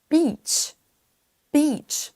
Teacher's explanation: Attention également à ce mot-là qui se prononce avec un i long.